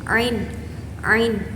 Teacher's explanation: huruf ain ini keluar dari tengah-tengah tenggorokan. Nah, suara dia itu dari tekanan lembut pita suara bagian tengah.